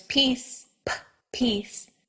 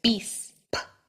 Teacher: for both of these consonants the difference between English and Spanish is all about that puff of air in English there's peace p pece and in Spanish there's be